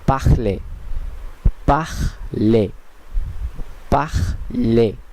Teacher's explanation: এখানে নিশ্চয়ই একটু ভালো করে খেয়াল করলে দেখবেন যে শেষের এখটি উচ্চারিত হচ্ছে না, বরং এখানে এ পর্যন্ত উচ্চারিত হয়ে থেমে যাচ্ছে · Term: সাইলেন্ট কনসোনেন্ট